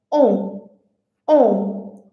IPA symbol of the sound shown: ɔ̃